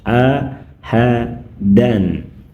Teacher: Ini tanwin ahadan sebelum dipertemukan dengan huruf halqi bunyinya jelas.